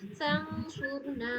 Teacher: جی اس میں سواد اور را دونوں کو پر پڑھیے گا.